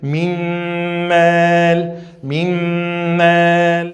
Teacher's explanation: Mimel, não vai falar minmel, não, a letra nun não vai pronunciar mais, porque a gente vai fazer fusão entre a letra nun e a letra mim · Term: Fusão com nasalização